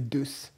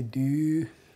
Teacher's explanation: It's umlauted and lengthened in compensation for the loss of the suffix letter.